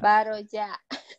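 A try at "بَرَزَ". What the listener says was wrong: Baroza. Selalu zanya ya.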